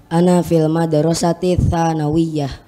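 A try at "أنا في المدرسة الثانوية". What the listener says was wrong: Coba dibaca apa adanya, tidak disukun yang terakhir.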